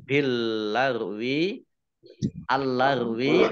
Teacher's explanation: alif lam yang pertama tidak dibaca. Langsung masuk ke huruf lam yang kedua ya. Ditandai dengan lamnya ada tasdidnya. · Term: alif lam syamsiah